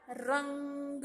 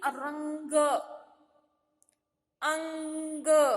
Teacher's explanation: आप जब बोलते हो, उच्चार करते हो ना, तब बच्चों क्या होता है, नाक से प्रतिध्वनि आता है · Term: अनुस्वार